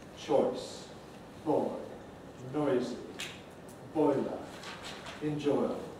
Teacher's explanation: These are the long vowels that move towards or are at high front tongue position.